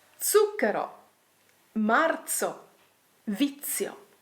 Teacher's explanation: Z is usually voiceless and it often sounds like a double ZZ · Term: Zeta